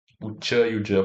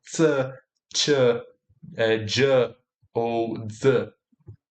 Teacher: Esses são sons em que a soltura do ar é inicialmente bloqueada e depois liberada com turbulência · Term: consoantes africadas